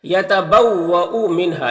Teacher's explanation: نون ساکن کے بعد ہا ہے حروف حلقی میں سے تو نون میں اظہار حقیقی ہوگا، نون کو ظاہر کر کے جلد پڑھیں گے۔ ہا میں الف مدہ ہے، ایک الف کے برابر کھینچیں گے۔